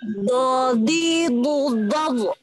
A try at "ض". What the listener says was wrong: Jangan, ya ini juga ya. Jangan mubalaghah. Mubalaghah itu berlebihan. Jangan bu, nah gitu ya. Nyantai aja. Ini huruf nyantai ya, tenang. Jangan mubalaghah ya. Jangan bu, biasa aja ya. Tapi nyantai aja.